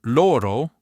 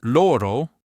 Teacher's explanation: Closed O, lips more rounded. Open O lips more open, jaw lowered.